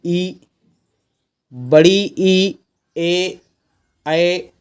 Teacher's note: ये सारे के सारे आपके क्या है अग्र भाग से बोले जाते हैं